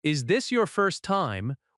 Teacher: If you ask, "Is this your first time?" with a slight rise at the end, it sounds open and friendly.